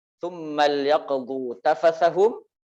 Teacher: Lamul amr ini ketika dibaca dengan sukun, maka hukumnya adalah izhar secara mutlak.